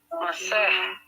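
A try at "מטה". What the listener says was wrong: Ini bukan sin, ini T. Ya, mateh. T ya. T-nya 2 ini, mateh.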